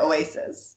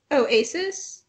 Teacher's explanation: I feel like you're saying oasis, like, with a glottal.